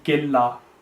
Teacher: So we have to make sure to know the difference between them, and in this case it's idgham tam, which means the noon will be completely silent as though it's not there, so the kaf and the lam will be joined together, so that be killa.